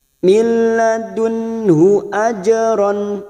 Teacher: fathah tanwin yang bertemu Ain Idhar halq dibaca jelas tanpa mendengung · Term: qalqalah sugro